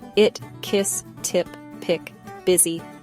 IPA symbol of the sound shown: ɪ